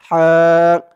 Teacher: হাফিযু, হা একালিফ টান, হা, হার আওয়াজটা গলার ভিতর থেকে চিকুন করে আনতে হবে